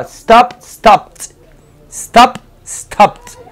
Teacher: Y tengo el verbo en pasado. Recuerden, no es una sílaba extra, es la misma sílaba.